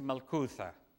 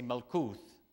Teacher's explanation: both in Aramaic and Hebrew same word except they dropped the a in Hebrew they just say no couth but in Aramaic we say Mel